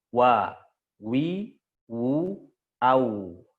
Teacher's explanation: Adapun waw sama di bibir, cuma waw nggak bertemu dengan perut bibir. Waw ini dia harus monyong dulu.